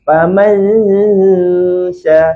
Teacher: Ya, saya beritahu tu Jawapan makhraj huruf shin, makhraj dia sejibik macam makhraj huruf jim. Iaitu tengah lidah kita kena langit-langit atas. Dia sipi-sipi kena. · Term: dengung huruf shin